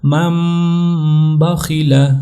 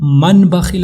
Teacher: नून साकिन की आवाज को बदल देना मीम साकिन की आवाज के साथ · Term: इकलाब